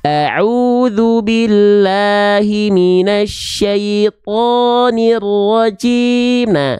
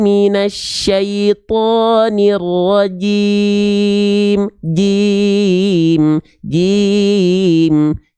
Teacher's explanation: Jadi nggak ada pantulannya, nggak ada percikan nafasnya. Karena huruf jim nggak punya sifat hams. Jim itu sifatnya jahar.